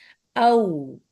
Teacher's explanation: वाओ और दफा की अदायगी में होठों को राउंड होना है।